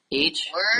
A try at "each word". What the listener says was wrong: No. Each isn't even important. Word.